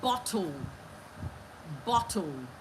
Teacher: You have bo and you have toe. But that toe is appearing as if there is no vowel. So that L will now act like a vowel. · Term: syllabic consonant